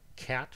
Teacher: So you have to start with sounds with low sonority, then climb up to the peak, and then come down. In cat, for example, you reach a peak at the vowel with a high sonority sound and then descend onto a stop. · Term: sonority peak